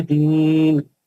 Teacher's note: आखिरी आयत में मद्य आरिज है उसको 6 हरकत से पढ़ेंगे